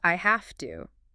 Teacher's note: Another classic is I have to. That v sound in have often becomes an f sound. And I have to because the T and two is voiceless and F is easier to say right before it.